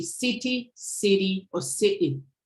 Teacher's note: What's variable is the tapping, flapping, and glottaling.